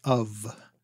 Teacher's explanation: We spell it with one F, but we pronounce it like it's a V.